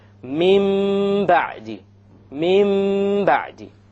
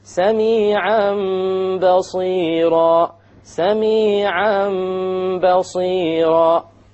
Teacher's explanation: We change the noon into a meme, and we perform a ghunnah on it. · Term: iqlab